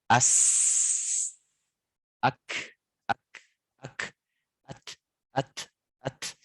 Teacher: Tapi menurut istilah adalah jarayanun nafasi inda nutki bil huruf. Nah, ketika kita mengucapkan huruf hams itu, nafas itu ngalir gitu